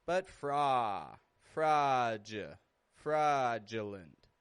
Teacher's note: A-U in the middle of a word often just gets that ah sound.